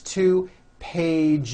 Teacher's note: The last sound you hear is that voiced Z.